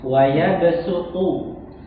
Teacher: Huruf po-nya nggak boleh keluar udara